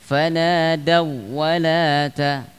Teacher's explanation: Fanadau walata tidak boleh dibaca dengan seperti idgham bi gunah, dengan mendengung